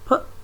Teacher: you can see there is no vibration that is why they are called voiceless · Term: voiceless sounds